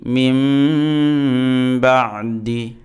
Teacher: আসছে কলব হয়েছে তাজবিদ পরিভাষায়। তো অতএব এই নুন সেকেন্ডের উচ্চারণটা নুনের উচ্চারণটা মিম দ্বারা পরিবর্তন হয়ে যাবে